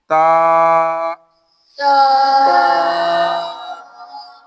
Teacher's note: ता यह जुबान की नोक और ऊपर के दांतों की जड़ से अदा होता है